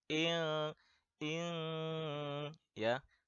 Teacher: Ini samar-samar antara n dan eng. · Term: ikhfa